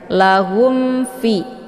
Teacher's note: bertemu dengan huruf Fa ini dinamakan dengan izhar syafawi cara bacanya mimnya dibunyikan secara jelas atau jelas bunyi m-nya tidak perlu ditahan cukup ditekan saja